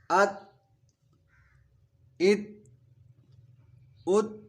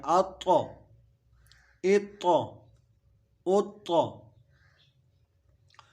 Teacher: طا چونکہ حروف قلقلہ ہے تو اس پہ آواز واپس لوٹتی ہوئی محسوس ہوتی ہے